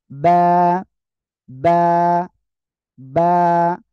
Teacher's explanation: দুই ঠোঁট, দুই ঠোঁটের ভিজা অংশ অর্থাৎ ভিতরের অংশ থেকে এই অক্ষরটা উচ্চারণ হবে